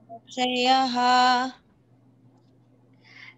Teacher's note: షా ముందర వచ్చిన అనుస్వారం కాబట్టి సం అనాలి. పళ్ళు మధ్యలో పెట్టేసేయండి.